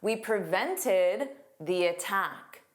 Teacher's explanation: a strong T when the following vowel, A, is a strong sound or a stressed sound